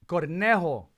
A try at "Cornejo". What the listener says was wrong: You gotta get your R in there. you said was a bunny, but I mean, it's still cute.